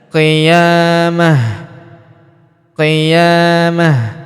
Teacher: Ta marbutah di ujung yang ini ya kita sukunkan. Dan karena dia sukun maka dia berubah menjadi ha sukun